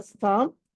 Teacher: దీంట్లో లాస్ట్ థ ఏదైతే ఉందో అది మహాప్రాణము